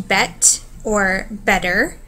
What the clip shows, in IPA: t or ʔ